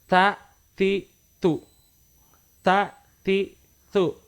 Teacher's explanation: Ketika menyebutkan huruf ta, itu seolah-olah ada huruf S yang menyempil di antara huruf T ya, di antara huruf T dengan huruf A. Ada huruf S-nya kecil, tipis sekali dibaca.